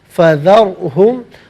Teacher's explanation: را ساکن ما قبل ذال پر زبر ہے، را ساکن کو پر کر کے پڑھیں گے۔